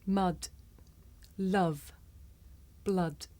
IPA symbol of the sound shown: ʌ